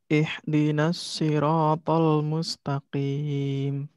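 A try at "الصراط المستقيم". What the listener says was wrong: Pangkal lidahnya sudah ngangkat barusan, tinggal nanti dilatih lagi, lebih diangkat lagi ya, sehingga nanti itu lebih kuat ya.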